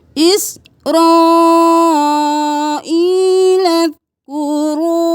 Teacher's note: रा को मोटा पढ़ें, मद है, कलिफ के बराबर खींचे। इस रा नहीं करना, इस रा, इस्राईल अज़्कुरू।